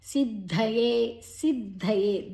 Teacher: ದ ಅಲ್ಪಪ್ರಾಣ ಧ ಅಡಿಯೊತ್ತು ಮಹಾಪ್ರಾಣ ಸಿದ್ಧಯೇ ದೀರ್ಘ.